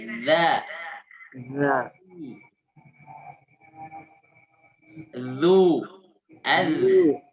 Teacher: Zal itu sifatnya rokhawah. Ada suara yang ngalir tuh.